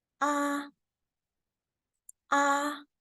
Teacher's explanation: So that is the first tone. It's high-pitched